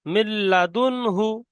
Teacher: নিচেটা দেখেন, মিম লাম জের মিল, নুন নুন পড়তে হবে না, মিম লাম জের মিল, লাম জবর লা, মিল্লা, দাল নুন পেশ দুন, মিল্লাদুন, হা পেশ হু, মিল্লাদুন হু। এখানে ডাইরেক্ট নুন কে বাদ দিয়ে ডাইরেক্ট লামের সঙ্গে মিলিয়ে পড়তে হবে। মিল্লাদুন হু, নুন সাকিনের পরে হরফে ইয়ার মালুনের 6টি অক্ষরের মধ্যে লাম এসেছে, তাই নুন সাকিনকে বিনা গুণনায় মিলিয়ে পড়তে হবে।